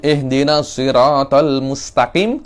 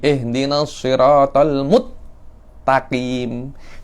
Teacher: Dia memasukkan sin ke ta.